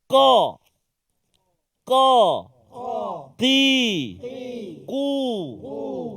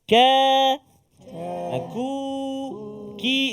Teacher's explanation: Pangkal lidah diangkat ataupun bertemu ke lelangit lembut bahagian atas. Pangkal lidah hujung dekat dengan anak yang ke anak, bukan anak sulung, anak tekak. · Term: huruf Qaf